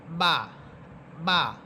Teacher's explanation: বা এই হরফটি দুই ঠোঁটের শুকনো অংশ থেকে উচ্চারিত হবে।